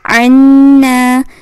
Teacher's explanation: نون الف نا یہاں پہ آپ نے گنہ کرنا ہے